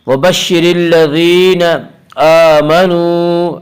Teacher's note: حمزہ کے اوپر کھڑا زبر ہے، کھڑا زبر کو ایک الف کے برابر کھینچ کر پڑھیں گے